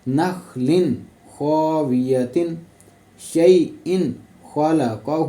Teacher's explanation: خا بھی حروف حلقی میں ہے نا، تو ہم نے یہاں پہ نخل ایسے غنہ نہیں کرنا، ہم نے اس کو سیدھے پڑھنا ہے